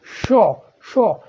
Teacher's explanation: जो हवा है मुंह से घर्षण या रगड़ कर बाहर निकलती है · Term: संघर्षी व्यंजन